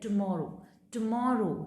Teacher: सो आपका म जो साउंड है वो लाउडर होगा, हायर होगा और लॉन्गर होगा। ये तीनों क्वालिटीज़ होनी चाहिए जिस सिलेबल को आप स्ट्रेस देके बोल रहे हो, ठीक है।